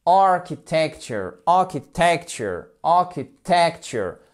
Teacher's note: Alors là, quand vous voyez un mot qui est long, vous pensez, ok, accent tonique. Il tombe où? Sur la première syllabe. · Et voyez en fait, comme on a ici un accent tonique qui est fort, du coup, en fait, ce qui se passe, c'est que la syllabe qui est juste derrière, en fait, elle se fait un petit peu manger et du coup, le I est prononcé comme un E atténué